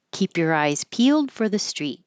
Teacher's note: instead of a perfect your and perfect for, I'm just making an easier sound. Basically, just the sound of the R.